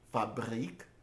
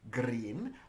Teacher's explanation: I tend to roll in back because the reish is preceded by a b in front. But a word like green, I tend to roll in front because g is in the back.